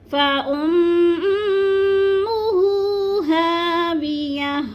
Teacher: فَأُمُّ کی میم کو سختی سے جمعوں سے پڑھنا ہے کیونکہ میم مشدد ہے ، اور الٹے پیش کو بھی تھوڑا سا کھینچنا ہے، فَأُمُّهُ